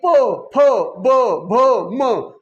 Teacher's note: ओष्ट ओठाचा वापर करावा लागतो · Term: ओष्ट्य